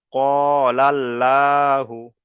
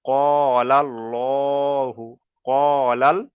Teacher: এই আল্লাহ শব্দটাকে পুর করে পড়তে হবে, অর্থাৎ ল উচ্চারণ হবে।